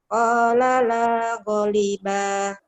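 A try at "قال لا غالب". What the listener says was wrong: Kan, golnya panjang atuh. Qala la ghaliba.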